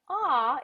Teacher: ah is what we call a mid vowel. So the tongue rests really gently in the base of your mouth. After ah, notice how open my jaw is, how I've got lots of space in my mouth for ah.